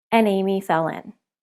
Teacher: in the swimming pool think about the words winana what happens we link the consonant onto the vowel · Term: linking consonants to vowels